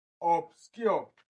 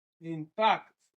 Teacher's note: For intact, obscure, and reform, the stressed part fall on the second syllable.